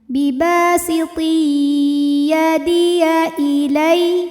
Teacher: ada tanwin kasrah menghadapi huruf ya. Maka tanwin dimasukkan ke ya. Biba siti disertai dengungan. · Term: idgham bi gunnah